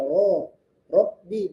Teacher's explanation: huruf ro rnya dibaca tebal